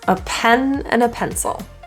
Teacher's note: quick native English conversational speech this is generally pronounced as uh it's called a schwa and it's just a neutral uh sound